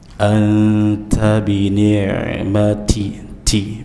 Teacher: jangan berlebihan dalam mengucapkan huruf ta, ya, dengan hams atau angin yang berlebihan. Anta bini'mati, ti biasa saja.